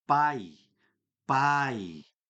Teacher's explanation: Olha como que o A ele é forte. E o I é aquele complementinho.